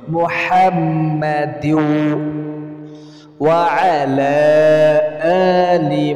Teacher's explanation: হলকের মধ্যকান মানে ওই যে গলার মাঝখান থেকে হা উচ্চারণ হয় আইন আর হা গলার মাঝখান থেকে উচ্চারণ হয়